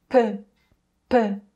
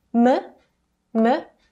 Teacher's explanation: piup is an aspirated sound, so clearly there's more air coming out when pronouncing piup. And barely any air comes out when pronouncing miim.